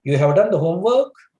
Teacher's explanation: I have uttered this sentence with a rising tone.